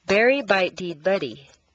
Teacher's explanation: totally denasalizing your voice for a moment which means turning the nasals into the other consonants